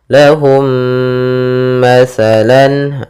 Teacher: langsung dimasukkan ke mim yang kedua dan ditahan suara gunnahnya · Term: idgham mimi